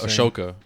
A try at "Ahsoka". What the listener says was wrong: Ahsoka. Ahsoka. You don't pronounce it. It's Ahsoka. You're saying Ashoka. It's Ahsoka.